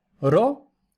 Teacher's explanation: ro, es una sílaba abierta, pero la vocal es larga por naturaleza